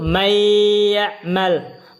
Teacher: maka dia diidgham, dimasukkan antara nun sukun dengan ya-nya disertai oleh gunnah. Tahan 2 harakat. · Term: idgham bi gunnah